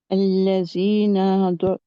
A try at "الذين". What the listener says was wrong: زینہ نہیں ہے، الذین زال پڑھے، آپ زا پڑھ رہے ہیں، زائی. اس کے مخارج الحروف میں سے آپ دیکھیں گے کہ اس کا مخرج کہاں ہے، کہاں ہے اس کا مخرج دال کا؟ زال کا مخرج حروف لسویہ ہے، جو زبان کی نوک اوپر والے 2 دانتوں کے سرے سے لگتی ہے، یعنی زبان کا بھی سرا اور 2 دانتوں کا بھی سرا. سا ذا اور زال.